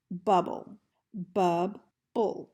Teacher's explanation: a final stable syllable where the vowel sound is uh that is not represented by a vowel in the word